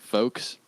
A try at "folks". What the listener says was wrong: Well, no, the L is silent unless you're talking about folk music.